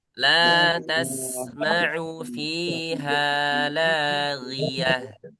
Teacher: ini ghainnya tipis ya, jangan tebal.